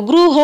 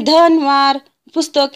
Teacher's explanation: इथे पूर्णपणे उच्चारला जातो गृह असा आपण त्याचा उच्चार करतो त्यामुळे अंत्य स्वर पूर्ण उच्चारलेला शब्द आहे गृह